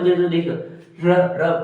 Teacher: तो र में अपनी जीहा कंपन करेगी